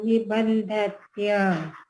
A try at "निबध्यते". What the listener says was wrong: Nibadhyate. No niban. Nibadha. Bodho hai na? Bodho.